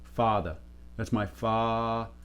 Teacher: father tends to be so not rounded, as opposed to New Yorkers where it tends to get a little bit of rounding